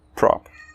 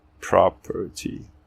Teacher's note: Temos o na palavra property, que temos o prop como sílaba enfatizada, termina em consoante, então é o som curto, prop, e não o som longo, prop, né?